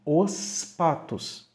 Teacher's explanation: agora antes de um p ele vai ser pronunciado com som de s mesmo